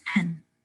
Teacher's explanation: When you say the word pen, you nasalize the sound in anticipation for the N. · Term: assimilation